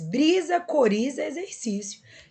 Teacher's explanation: brisa e exercício tem som de Z, embora seja escrito com S e com X. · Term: fonema Z